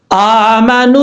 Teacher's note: یہاں پر واو مدہ ہے ایک الف کی مقدار لمبا کر کے پڑھا جائے گا